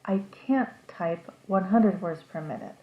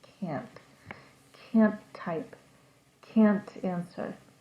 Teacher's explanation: The T sound at the end of the word is very quiet